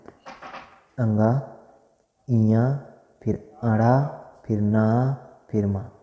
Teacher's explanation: इनका जो उच्चारण स्थान है वो नासिका है